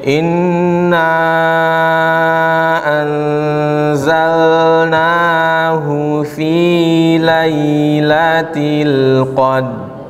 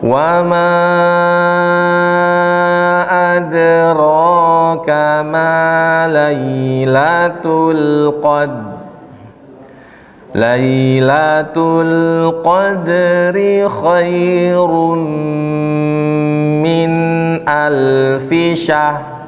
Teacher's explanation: titik tekannya ro semua di akhir kata harus jelas terdengar. Kesalahannya nggak jelas tuh.